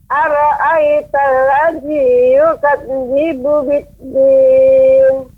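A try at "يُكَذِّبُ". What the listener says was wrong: Ya, pengucapan yukadzibu Ibu terdengar yukadzibu, ada sedikit terjeda ya, nah seperti itu. Akan tapi dia langsung ya, tidak ada jeda, yukadzibu, dia tidak ada berhenti, tapi adanya tasydid ya, yukadzibu.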